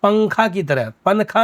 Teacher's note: تو تنوین یا نون ساکن کا قاعدہ نمبر 2 ہم نے پڑھایا تھا کہ جس میں تھا کہ تنوین یا نون ساکن کے بعد حروف اخفا میں سے کوئی حرف آوے تو نون کی آواز کو کیا کریں گے؟ ناک میں چھپا کر پڑھیں گے